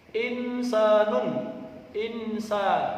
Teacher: nun mati bertemu Sin bacaan Ikhfa harus samar